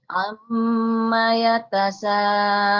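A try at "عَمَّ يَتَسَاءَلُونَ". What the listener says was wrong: Iya, bagus.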